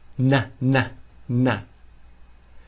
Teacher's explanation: touching and they need to vibrate I'm I'm and then Ghana the tip of the tongue is touching the roof of the mouth the aler ridge n n I'm g g I'm Gana I'm